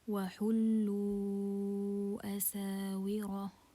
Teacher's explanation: Here we have a mad and it's followed by hamza in 2 words, so it's mad منفصل, separated mad, 4 counts.